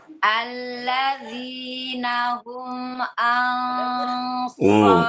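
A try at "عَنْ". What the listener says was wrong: ain, bukan a, salah. Ain.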